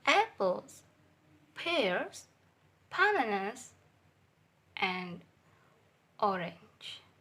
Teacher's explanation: in this type intonation falls on the last item to show that the list mentioned is finished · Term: combining intonation in list